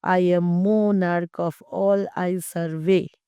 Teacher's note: There are two unaccented or unstressed syllables, and then there is a stressed syllable. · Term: anapaestic trimeter